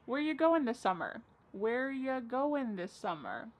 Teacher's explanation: Where ya, which is you, goin', dropping the G.